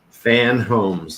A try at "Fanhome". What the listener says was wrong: Fan Just home without the S.